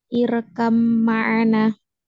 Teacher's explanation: Jadi huruf ba-nya ini sudah tidak dibaca ya. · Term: idgham mutamatsilain